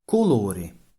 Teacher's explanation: o in Italian often corresponds to u in Sicilian